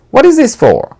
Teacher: for is fully pronounced at the end of a sentence